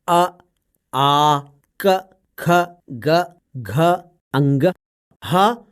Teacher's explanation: अ, आ, क, ख, ग, घ, अंग, ह और विसर्ग का उच्चारण कंठ से होता है, इसलिए इन्हें कंठ वर्ण भी कहते हैं।